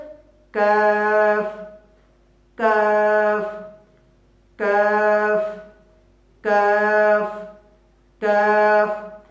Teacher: জিহ্বার গোড়ার থেকে সামান্য সামনে আগিয়ে তার বরাবর উপরের তালু থেকে কাফ বর্ণটি উচ্চারণ করব · জিহ্বার অর্ধাংশের মধ্যস্থল তার বরাবর উপরের তালুর সঙ্গে লাগিয়ে কাফ বর্ণটি উচ্চারিত হয় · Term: কাফের মাখরাজ